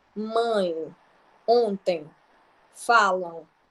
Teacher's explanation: Já o nasal, durante a pronúncia, o A passa tanto pela boca quanto pelo nariz.